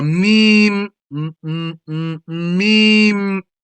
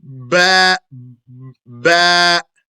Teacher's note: From the two lips together come the meme, meme, the ba, ba, and the wow, wow. However, the last of these three, the wow, it leaves an opening between the lips. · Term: lip letters